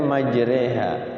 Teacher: Di situ tulisannya majroh tapi tapi dibacanya majreha namanya imala